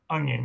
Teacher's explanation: it can start with a glottal stop sometimes